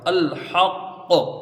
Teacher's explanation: تو یہ کون سے درجے کا قلقلہ ہوگا، ہے نا، اقوی درجے کا، یعنی سب سے طاقتور، سب سے قوی جو قلقلہ ہوتا ہے اقوی، وہ قلقلہ ہوگا